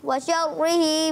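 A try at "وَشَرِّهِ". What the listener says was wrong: व शर्रिही। अच्छा, इसको रा को बारीक। व शर्रिही, व शर्रिही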